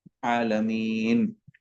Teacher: نون کے اوپر حرکت ہے، حرکت کو ساکن کر دیں گے.